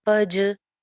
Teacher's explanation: जीम पे कलकला हो जाएगा